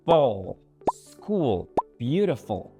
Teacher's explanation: In the dark L, the back of your tongue will rise slightly,